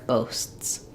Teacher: the T is not there, but there's a break between the two S's